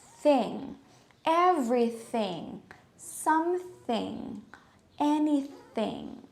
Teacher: the sound is right between our teeth the upper and lower teeth